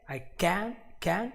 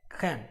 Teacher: So to avoid entirely this situation, just go with the American accent version, which is way easier because you use the vowel e for both the sounds, but this is a more open e, I can, and this is a closer e, can. But as we explained before, this is like you are going to remove the vowel altogether, and here you just say it.